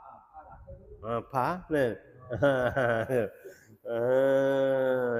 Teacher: Kedua bibir mulut pop jadi pa